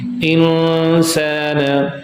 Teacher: There is hiding. Okay, not full gunna but half gunna.